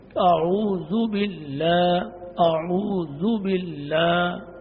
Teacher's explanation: اعوذ باللہ، اعوذ باللہ، زو پڑھنا ہے. زو کو لمبا بھی نہیں کرنا کہ واو پیدا ہو جائے، بلکہ اس کو معروف پڑھنا ہے